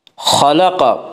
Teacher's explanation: خلق خا اور قاف دونوں کو پر پڑھیں گے کیونکہ دونوں حروف حروف مستعلیہ میں سے ہیں